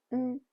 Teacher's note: in this combination the third tone is pronounced as a low tone and in normal speech the sound is relatively short while the first tone is the opposite is a high flat pitch